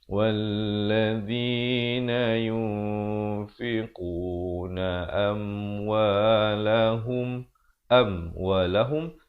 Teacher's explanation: Bacaannya dengan samar sahaja di antara bunyi nun mati dan di antara huruf fa. Kada 2 harakat. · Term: ikhfa hakiki